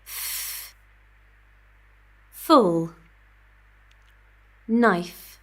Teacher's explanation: Constant flow of air squeezed through a block sounds like friction. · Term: fricative